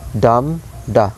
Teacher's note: One stressed syllable followed by unstressed syllable. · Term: trochee or trochaic foot